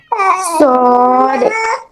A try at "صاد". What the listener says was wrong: আর একটু মোটা করেন, চিকন হয়ে যাচ্ছে। আরেকটু মোটা। এই যে এই হরফটা এখানে মোটা হবে, ঠিক আছে? এই যে লেখা আছে এখানে, এই হরফটা উচ্চারণে মোটা হবে, চড়ুই পাখির মতো একটা আওয়াজ ক্রিয়েট করবে এখানে।